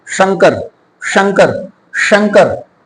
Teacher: ऊपर जीभ तालू की तरफ जाएगी